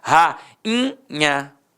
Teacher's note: O I ficou o quê? Nasalizado. Portanto, não vai ter acento.